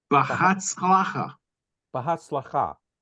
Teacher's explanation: So in Sephardic pronunciation, generally speaking, the emphasis is on the last syllable. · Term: accent on the last